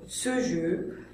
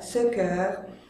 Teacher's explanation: Ça dépend des locuteurs et de leur région d'origine, de leur accent régional. Certains vont le prononcer E fermé, comme ce jeu, d'autres plus ouverts, ce cœur.